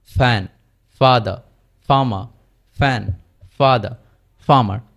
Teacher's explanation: আর এফ এর সময় দাঁত এবং নিচের ঠোঁট থেকে উচ্চারিত হবে, কিন্তু কম্পিত হবে না